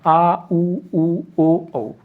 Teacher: ये पांच ऐसे हैं जो पश्च स्वर मतलब पीछे के भाग से बोले जाते हैं। जीभ के पीछे के भाग से बोले जाते हैं।